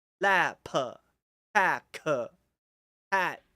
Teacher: you have to drag out the consonants if you want to be like a more authentic Taiwanese accent. Of course, not everyone in Taiwan talks like this.